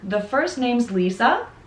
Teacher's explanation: the upwards intonation indicates that the conversation will continue.